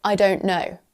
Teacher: No t sound to be found there. Assimilation.